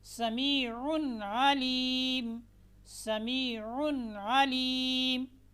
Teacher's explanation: نون ساکن اور نون تنوین کے بعد حروف حلقی میں سے یہاں پر حمزہ، ہا، عین، حا، غین، خا میں سے کوئی بھی آئے گا تو نون ساکن اور نون تنوین کو بغیر غننے کے واضح کر کے پڑھیں گے